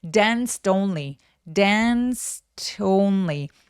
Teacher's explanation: dance only 요런 식으로 부드럽게 연결을 해 주시는게 자연스러워요. 항상 온니처럼 두 번째 단어가 모음으로 시작한다면 바로 앞에 자음을 받아서이어서 소리를 내게 되거든요.